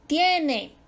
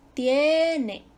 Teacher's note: Ahí hay un diptongo, la sílaba tónica te cae en la fuerte. Tiene. Grave, no se acentúa porque termina en vocal.